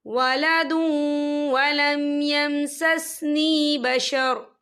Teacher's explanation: وف کی صورت میں را جو ہے ساکن ہو جائے گا